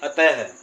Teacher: जब यह विसर्ग आएगा तो वहां पे थोड़ी ह की ध्वनि आती है